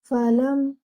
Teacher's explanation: Your lam should join with the meme, as your meme is mushaddad. So you will also read your meme with akmal gunna. That is most complete gunna. So stretch your gunna and give your meme two counts.